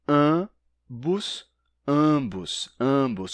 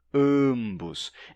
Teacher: o A não é nasal, mas depois aparece um sonzinho de M mesmo antes do B. Ambos, ambos.